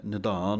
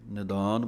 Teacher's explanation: ਨਿਧਾਨ ਪਾਠ ਜੋ ਹੈ ਧੱਦੇ ਦੇ ਨਾਲ ਬੋਲਣਾ ਹੈ ਭਾਰਾ ਕਰਕੇ, ਨਿਦਾਨ ਪੋਲਾ ਨਹੀਂ ਪੜ੍ਹ ਦੇਣਾ।